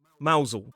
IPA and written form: ˈmaʊzl (Mousehole)